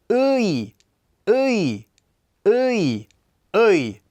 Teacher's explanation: Our first diphthong is a combination of the vowels ㅡ and ㅣ.